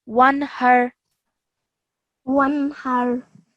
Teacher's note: you do not pause on the noon, or you do not elongate the sound of the noon